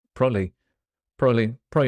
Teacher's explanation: we make that really short and mash it together there's no Bees in there probably yes probably like probably and then it's just prolly it's